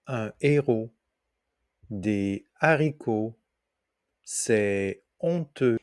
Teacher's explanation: Le H dit aspiré du français moderne ne correspond pas à une aspiration, mais sert simplement à maintenir un hiatus, en empêchant la liaison et l'élision. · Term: H aspiré